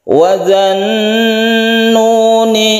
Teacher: harus di idghomkan halnya tidak dibaca jadi langsung wajan kita gunakan karena membentuk huruf nun yang bertasydid sehingga otomatis yaitu gunnah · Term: Idgham Syamsiah